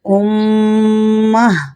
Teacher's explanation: حمزہ میم پیش میم زبر ما، امہ، تا دو زیر تن، امتن، وقفاً، امہ۔ گل تا پر جب بھی وقف کرتے ہیں تو تا کو ہاء میں بدل دیا جاتا ہے